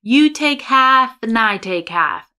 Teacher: Here we have a syllabic N for the and.